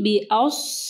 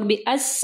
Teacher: حمزہ نرم، پھر صاد ہیوی